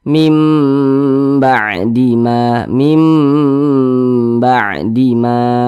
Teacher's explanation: ba maka hukumnya adalah iqlab Nah maka cara membacanya itu ya huruf nun ini dibaca menjadi huruf mim nih Nah dibaca mim nah kemudian didengungkan